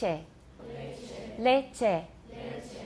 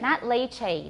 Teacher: It sounds like English A, but it's not a diphthong. It's just a pure monophthong, A.